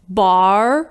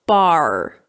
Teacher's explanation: in Irish English it's more or less like the /r/ we pronounce at the beginning of a word like 'road', so it's 'bar'. · in American English we raise the back of our tongue